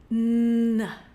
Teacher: Here you can see that we keep the lips a little bit apart, and this time it's actually the front part of the tongue here, which is rising in the mouth, and as it rises up, it touches the ridge area, which is just behind your top teeth. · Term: N for no